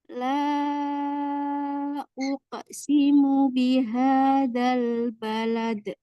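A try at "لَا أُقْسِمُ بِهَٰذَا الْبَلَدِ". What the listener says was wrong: Nah, la buka lagi rahangnya. La uqsimu bihadzal balad. Nah, uqsimu bukan tapi uqsimu. Nah, qalqalahnya itu memantul di huruf aslinya. Jadi huruf di sifat qaf itu kan tebal. Uqsimu. Bukan bukan, tapi uqsimu.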